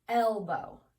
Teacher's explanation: at the beginning you hear an e your chin drops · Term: short e